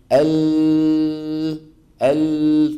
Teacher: فتجد بان طرف اللسان شو عامل مسدود الطرف الامامي مسدود والصوت لما عم يطلع عم يصطدم وينحرف بعضه يمنه وبعضه يسرى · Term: انحراف اللام